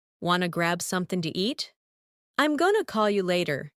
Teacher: In real English, people often drop sounds when speaking fast. For example, want to becomes wanna. Going to becomes gonna